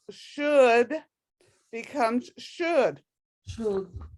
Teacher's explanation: You don't really say the O and you don't really say the L.